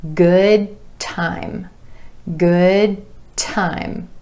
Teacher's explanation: Instead of releasing that D at the end of good and saying good time, we're going to hold that D. We're going to hold the position for the D and go straight into the T.